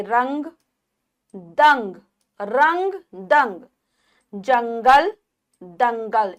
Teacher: नाक से ध्वनि निकलती है, वायु हमारी नासिका से बाहर आती है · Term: अनुस्वार